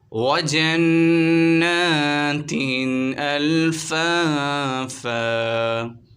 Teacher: ناظرین نون مشدد ہے، یہاں پر غنہ ہوگا، جن، کھڑی حرکات ایک الف کی مقدار کھینچیں گے۔ دو زیر کی تنوین کے بعد حمزہ آ رہا ہے، یہاں پر اظہار کا قاعدہ ہوگا